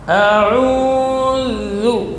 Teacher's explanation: huruf za, rakhawah dan jahar. Jadi tidak boleh berdesis, tidak boleh dibaca a'udzu.